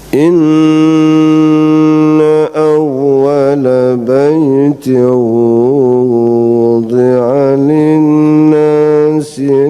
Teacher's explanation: suara tanwin hilang karena bertemu dengan wawu, maka suara tanwin itu menjadi wawu. Itu juga gunnah, namanya idgham bi gunnah.